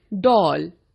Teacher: यह हिंदी स्वर आ और ओ के बीच की ध्वनि है। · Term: औ स्वर